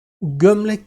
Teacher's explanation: ilk hecede dikkat ederseniz yuvarlak ünlülerden biri var